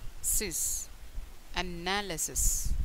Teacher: The stress on the second syllable.